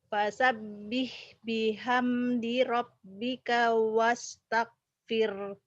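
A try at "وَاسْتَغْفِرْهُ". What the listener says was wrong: Kalau berhenti di sini wastaghfir ya, ada haknya nih. Kalau wastaghfir berarti hu-nya hilang, salah. Wastaghfir ya. Wastaghfirhu coba.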